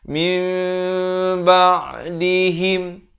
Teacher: Ditukarkan daripada bunyi nun kepada bunyi mim. Daripada min jadi mim. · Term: hukum iqlab